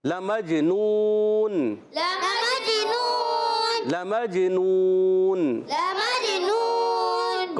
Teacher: تو میم کو جیم سے ملانا ہے, جیم میں قلقلہ ہوگا. نون واو پیش نو, حرف مدہ, اور آخر میں نون ساکن, تو یہاں ہو جائے گا مد عارض. · لمجنون, لام پر زبر ہے, نہیں کھینچیں گے. میم کو جیم سے ملائیں گے, جیم حرف قلقلہ میں سے ہے, اس لیے آواز لوڈ کرائے گی, قلقلہ ہوگا.